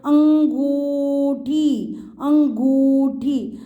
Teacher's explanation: अंगूठी अंग नाक से इसमें तो खाली बोलो अंग अंग नाक से साउंड आ रही है इसमें ओपन माउथ भी जा रहा है और नाक से भी साउंड आ रही है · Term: चंद्रबिंदु